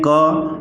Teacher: क के बाद अ की ध्वनि निकलती है